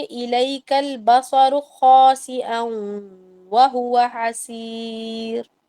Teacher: بصرو کو لمبا نہیں کرنا، را کو لمبا نہیں کرنا ہے، اس کو چھوٹا ہی رکھنا ہے جتنا وہ ہے